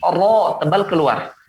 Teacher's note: Dia tidak menghujam ke atas tebalnya, tapi tebalnya keluar. Ro. Kalau yang ke atas adalah suara yang ke atas adalah huruf isti'la.